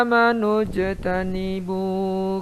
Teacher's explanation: jim sukun dibaca qalqalah, harus kedengaran j-nya